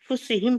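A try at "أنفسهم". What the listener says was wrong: नहीं, सीन पर जबर है तो अनफुसहुम ही पढ़ना। गलत हुआ वो, अनफुसहुम ही है वो, अनफुसहुम। हाँ, मैं जरा केयरफुल होना पड़ता है, मैं वो रो में बोल दे रही हूँ, बोलने की रो में चले जा रहे हो, जेर जबर कर दे।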